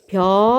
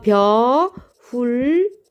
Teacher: 입천장 소리예요. 그러면은 조음 위치가 지금 잇몸 소리에서 입천장 소리로 바뀌었죠